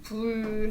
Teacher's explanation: 불은 불 하면서 불 하면서 두 입술 사이에서 나는 소리예요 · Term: 두 입술 사이 소리